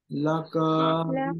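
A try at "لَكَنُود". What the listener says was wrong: টান হবে না, লাকানুদ, শেষে কি হবে দালে বলেন তো, পেশ হবে। ভাই এখানে ওয়াকফের নিয়ম কি, খাওয়া দাওয়ার খালাদের উল্টা পেশ, তাই না?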